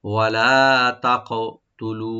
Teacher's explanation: তা ওপেন থাকবে, কাফটাকে আমরা রাইট দিয়ে একটু কলকলা করব, তাক তুলু, লু এখানে আমরা তিন আলিফ টানবো মাদ্দে মুনফাসিল